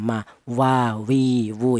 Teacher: Untuk huruf wawu, keluarnya huruf berasal dari kedua bibir yang renggang ya, sama-sama kedua bibir.